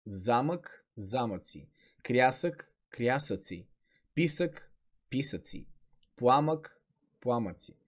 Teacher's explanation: при съществителните имена които завършват на ък в множествено число звукът ъ не изпада